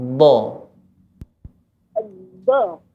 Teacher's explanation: Jadi sebelum mengucapkan huruf do, ini menekan dulu lidah yang bagian belakang, tepinya. Ditekan dulu.